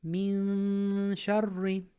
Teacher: we're going to pull our tongue back a bit. We're going to mute the sound, and we're going to hold it 2 counts. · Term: Ikhfaa